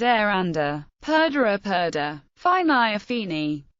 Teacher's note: the loss of the infinitival ending re of verbs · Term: Loss of infinitival re